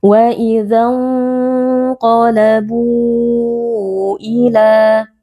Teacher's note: Wa idza qalabu, di sini ada nun sukun bertemu dengan huruf qaf, hukumnya adalah ikhfa hakiki. Cara membacanya nun sukun disamarkan lalu dibaca dengan berdengung. Kemudian perlu diperhatikan karena di sini nun sukun bertemu dengan huruf yang tebal, maka ikhfanya dibaca dengan tebal.